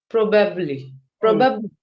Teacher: Stress on the first part of the word.